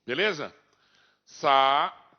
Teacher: Então, separei o A e o I, é o hiato.